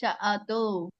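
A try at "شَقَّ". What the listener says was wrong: ஷீன் இல்ல, இதுதான் ஷீன், அது சீன். சஅது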